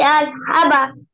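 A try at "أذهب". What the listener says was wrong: আজ না, জাল জাল আজ। জাল দিয়ে জিম না। আজ বলো কেন? জিম না তো এটা, জাল জাল। জাল জাল। বলো তো জাল। জাল।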